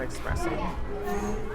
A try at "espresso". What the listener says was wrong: You keep pronouncing espresso with an X.